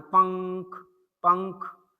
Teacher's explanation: पंख बोलते समय नाक से ही सिर्फ ध्वनि आ रही है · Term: अनुस्वार